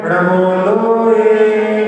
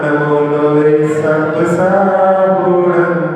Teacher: णमोकार मंत्र में लोए का जो ए है वो ह्रस्व है, एक मात्रे का। एक मात्रे के हम उसको खींच नहीं सकते।